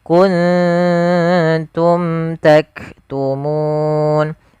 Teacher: suara nunnya kita masuk, maaf, kita samarkan kepada huruf ta. Jadi, ikhfa itu membaca di antara idgam dan izhar. · Kuntum nun mati ketemu ta yaitu hukum bacaan ikhfa. Ikhfa di sini ikhfa hakiki yaitu suara nunnya kita samarkan kepada huruf ta.